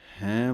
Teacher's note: ਇਸ ਬਿੰਦੀ ਦੀ ਆਵਾਜ਼ ਜ਼ਰੂਰ ਕੱਢਣੀ ਹੈ ਨੱਕ ਦੇ ਰਾਹੀਂ।